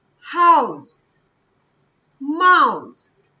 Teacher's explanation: so we say vowel sound diphthong it's also called gliding vowels first vowel sound which is stronger glides towards second vowel sound